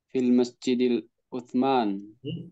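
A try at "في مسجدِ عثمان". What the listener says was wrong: Alif lamnya. Sebentar, alif lamnya tidak ada di sini. Fi masjid Uthman. Lamnya tidak ada di sini.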